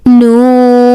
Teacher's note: this noon originate when tongue Edge touching the gums extending both upper canine